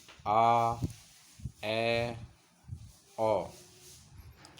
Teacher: वे स्वर जिनका उच्चारण जिह्वा से करते समय मुख बहुत अधिक खुलता है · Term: विवृत स्वर